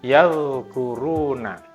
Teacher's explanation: Jadi ketika itu sukun, suara itu tetap dilepaskan, tidak dibaca 'yadkuruna' tetapi 'yadkuruna'. Bunyi 'dal' tetap dilepaskan hingga bunyi 'kaf' muncul.